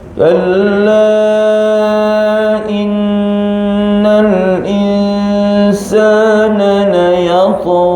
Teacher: Kalla innal insana la yatgha. Kalla konsisten pada dua dengung. Innal dengung, insan pun dengung.